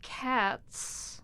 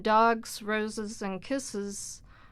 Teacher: why is it that cats, it sounds like a s sound, when dogs, roses, and kisses are all using the voiced z?